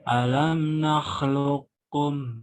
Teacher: jadi qafnya ini lebur kepada kaf. Makanya namanya idgham, melebur ya, huruf pertama kepada huruf yang lain. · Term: mutaqarribain